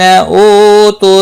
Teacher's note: او واو مدہ ہے ایک الف کے برابر کھینچ کر پڑھیں گے